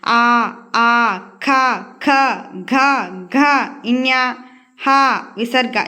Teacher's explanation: ఇవన్నీ కూడా మనం మనం కంఠం నుంచి పలుకుతాం సో వీటిని కంఠ్యాలు అంటారు